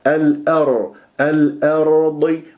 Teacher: والهمزة مرققة لا تفخمها بسبب الراء، الراء مفخمة لأنها ساكنة قبلها مفتوح، تقول الأو لا الأ، الأر الأرض، والضاد مفخمة مرتبة أخيرة مكسورة من أحرف الاستعلاء.